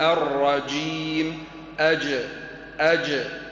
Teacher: وسط لسانك مع ما يقابله من الحنك الأعلى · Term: فالجيم